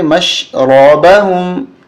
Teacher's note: میم مشدد ہمیشہ غنہ ہوتا ہے اور را کو موٹا کریں گے